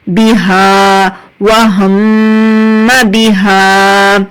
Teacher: ایک الف کے برابر کھینچ کر کیونکہ الف مدہ ہے